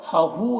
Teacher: ہا میں الٹا پیش ہے، الٹا پیش واو مدہ کی طرح ہوتا ہے تو اسے بھی ایک الف کے برابر کھینچنا ہے